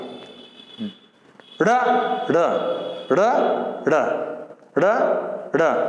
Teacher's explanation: तो उतक्षिप्त व्यंजन, जो ऐसे व्यंजन जिनको हम जब बोलते हैं तो अपनी जीभ पहले तो एक जगह टक जाती है, फिर झटके से बाहर आती है, ड़ ड़ ड़ ड़ ड़ ड़, ऊपर टच करके एकदम नीचे कूदती है जीभ, झटके से जीभ बाहर आती है, तो इनको क्या कहते हैं, उतक्षिप्त।